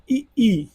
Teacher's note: ई जो है कहाँ से उच्चारित होता है? तालु से उच्चारित होता है।